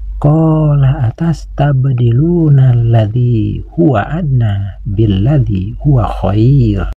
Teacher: Huruf ba sukun ini harus dibaca qalqalah, yaitu qalqalah sugro, karena disukunkannya huruf ba ini berada di tengah bacaan.